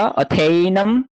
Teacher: अकार और एकार को मिला के ए हुआ